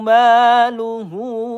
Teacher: Luhu ini mad jais munfasil, panjangnya 2 ayunan atau 4 harokat